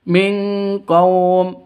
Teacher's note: nun mati bertemu dengan qaf. Cara bacanya samar didengungkan, siap-siap ke huruf qafnya. Kenapa? Karena ini terus non matinya ditambah dengan ng, makanya disebut dibacanya ming, seperti itu ya.